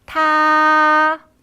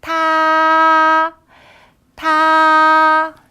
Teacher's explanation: 높고 평평하게 유지 되는 소리입니다